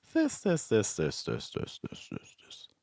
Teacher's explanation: use a wide range of pitches they go really high sometimes and they also go lower